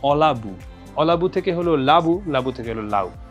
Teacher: আদিতে বা শুরুতে যে স্বরটা থাকবে সেটা লোপ পাবে বা সেটা চলে যাবে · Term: আদি স্বরলোপ